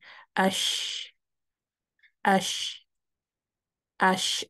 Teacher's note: جیم میں بالکل ٹچ ہوتا ہے، شین میں ٹچ نہیں ہوتا۔ اس لیے جب ہم شین کو سکون کے ساتھ پڑھتے ہیں تو مخرج اوپن رہتا ہے اور ہمیں قلقلہ کی ضرورت پیش نہیں آتی · شین میں آپ دیکھیں گے کہ زبان پیلیٹ کے بہت قریب گئی ہے لیکن ٹچ نہیں کر رہی۔ تو جو شین ہے وہ اگین سینٹر سے زبان اٹھے گی، لیکن اتنا نہیں اٹھے گی جتنا کہ جیم میں اٹھتی ہے۔